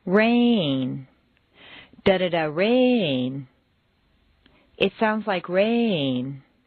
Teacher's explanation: make rain very Musical and put it on two notes